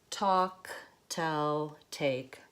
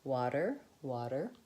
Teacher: So the puff of air doesn't come out, and it's also voiced. So the aspirated T, has no voicing, but flap T, has voicing.